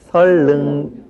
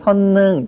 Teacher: 우리말의 지난번 맞춤법 시간에 우리가 공부를 했는데 우리말에서는 니은과 리을이 연결되는 것을 아주 꺼려한다라고 말씀을 드렸어요. 그래서 니은과 리을이 연결될 때는 니은을 리을로 바꿔서 발음하는 것이 아주 일반적인 발음 현상입니다